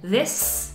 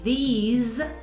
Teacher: la pronunciación de this con S, that, these con Z